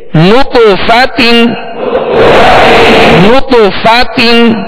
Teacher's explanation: جب نطف کہیں گے تو ہونٹوں کو گول کریں گے کیونکہ نون پر پیش ہے. فا کی زبر پڑھتے ہوئے آواز اور منہ کھولیں گے، تا کی دو زیر پڑھتے ہوئے آواز کو گرائیں گے.